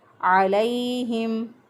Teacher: हा जो है इसको हम अक्सा हलक से अदा करेंगे, यानी गले का वो हिस्सा जो कि सीने की तरफ होता है, वहाँ से 2 हरूफ अदा होते हैं, हा और हमज़ा।